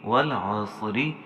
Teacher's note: صاد موٹے حروف میں سے ہے، اسے آلریڈی موٹا پڑھیں گے، اور را کے نیچے حرکت ہے، لہٰذا یہاں را باریک ہے